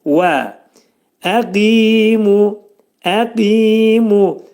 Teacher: Qaf hərfinin məxrəci dilin sonu dilçəyin başlanğıcındadır.